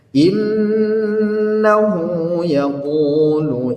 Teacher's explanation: Di sini namanya mad silah qasirah, panjangnya 2 harakat karena huruf hu-nya, ya, bertemu dengan huruf selain daripada hamzah